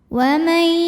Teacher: auzzubillahiminasyaitanirrajim [Musik] Bismillahirrahmanirrahim wamai di sini ada hukum idgham bighhunah karena ada nun sukun yang menghadapi huruf ya maka bunyi Nun sukunnya dimasukkan ke ya dileburkan